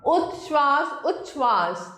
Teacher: परंतु त के बाद यदि श हो तो त च में और श छ में बदल जाता है।